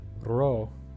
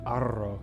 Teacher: ro is a short roll and arrow is a long roll